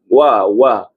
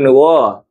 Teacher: Wau makhrajnya dimuncungkan mulut. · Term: huruf wau